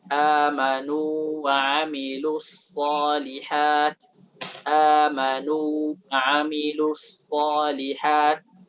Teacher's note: Walaupun waw bertemu dengan waw, tapi di sini izhar.